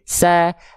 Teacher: Bukan se tapi sa. Tetap jelaskan vokal A-nya tapi tipis, tapi bukan vokal E juga.